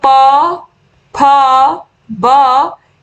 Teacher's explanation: प, फ, ब इन सभी का उच्चारण होता है ओष्ठ से, यानी कि ओठों।